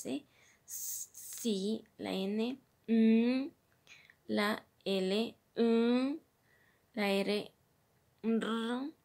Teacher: la punta de la lengua como órgano activo toca los alvéolos superiores